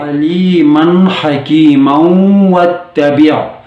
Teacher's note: ادغام مع الغنہ کے ساتھ وصل کرنا پڑے گا